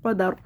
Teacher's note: وقف کی صورت میں پڑھیں گے قدر، را ساکن سے پہلے زبر ہے اس لیے را کو موٹا پڑھیں گے